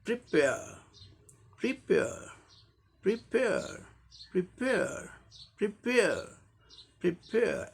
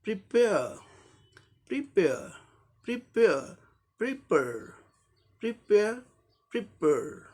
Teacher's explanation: अब इसी का अमेरिकन में क्या हो जाएगा, जो आर साइलेंट था वो आर का र साउंड आ जाएगा। और एक और अंतर क्या हो जाएगा, ए का ई ए साउंड था, यहाँ ए साउंड सिर्फ है, ए ब्रिटिश में, अमेरिकन में ए, और आर भी आ जाएगा, यहाँ साइलेंट नहीं होगा।